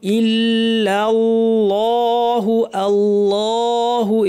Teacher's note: এখানে আল্লাহের লামটা একটু ভারী করতে হবে। ইল্লা, এটা পাতলা থাকবে লামটা, কিন্তু আল্লাহের লাম ভারী।